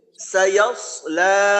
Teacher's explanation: তো সদের উচ্চারণ করতে গিয়ে একটা হলো সিনের মতো হয়, আর একটা সমস্যা হয় সায়াসলা, ইয়াটা একটু লম্বা হয়ে যাইতে চায়, তো ইয়াটাকে লম্বা করা যাবে না, ইয়া ছোটই থাকবে